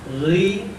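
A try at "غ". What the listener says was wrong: Enggak ri, enggak ada endingnya. Oh, gho ini benar, dia pelafalan saya keliru. Enggak gho, coba gho.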